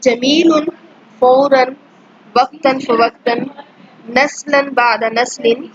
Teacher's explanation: جب آپ لوگ اس کو بولتے ہیں تو اس میں نون کی آواز آتی ہے ، لیکن جب آپ لکھتے ہیں تو یہ دو زبر دو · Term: تنوین